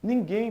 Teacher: Ninguém, pessoal, tem a sílaba tônica na última, ou seja, é uma oxítona e não a paroxítona.